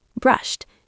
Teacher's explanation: Even though it ends with the letters e and d, it sounds like a t at the end. Brushed. It's a sharp sound.